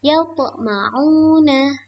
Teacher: karena ada huruf to bersukun, anak-anak membacanya harus memantul. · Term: qalqalah sughra